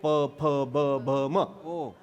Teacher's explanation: आपल्याच ओठाला आपलाच ओठ लागला की अक्षर तयार होतं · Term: ओष्ठ